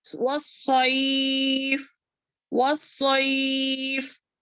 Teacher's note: वह सौद को मोटा पढ़ेंगे, इसको जो है सैफ नहीं पढ़ेंगे, सैफ नहीं, वस्सैफ, वस्सैफ, ठीक है।